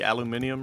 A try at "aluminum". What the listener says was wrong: oh, it's aluminum cap. Don't say it like British people. British people just call it aluminium, but it's literally there's no difference.